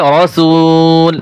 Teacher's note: যখন ওয়াকফ করব রসুলু আর হবে না এই যে পেশ রয়েছে হরকত উচ্চারণ হবে না